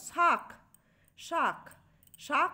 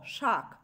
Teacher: ক ছিল অল্পপ্রাণ ধ্বনি সেটি খ মহাপ্রাণ ধ্বনিতে রূপান্তরিত হয়ে উচ্চারিত হচ্ছে